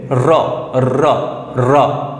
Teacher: জীভের সামনের অংশটা প্রচন্ড স্পিডে ছুটে আসবে আর কেঁপে উঠবে র উচ্চারণ করো তাই এটাকে র কে বলা হয় র ব্যঞ্জনকে বলা হয় কম্পিত ধ্বনি। · তুমি খেয়াল করবা জিভের সামনের অংশটা প্রচণ্ড স্পিডে ছুটে আসবে আর কেঁপে উঠবে।